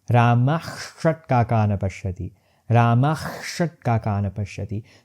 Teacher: That is because my Visarga midway is transforming into half sh